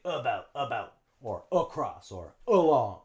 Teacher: instead of the short A sound, we use schwa